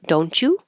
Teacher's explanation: the T and the Y make a CH